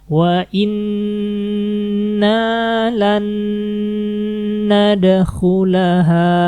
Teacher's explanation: Nah, ini idgham bigunnah berarti. Masukin langsung ke nunnya yang kedua, yang ditasdidkan. Jangan lupa ditahan 3 harokat.